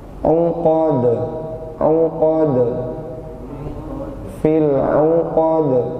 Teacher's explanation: Ya, lepas dan balikan ke makhrajnya. Pantulan dal itu sempurnakan bunyi e-nya.